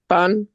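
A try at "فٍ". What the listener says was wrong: No, no, not fun. Fa with double kasra. Fin. So the double kasra is in, and the sound of double dhamma is un.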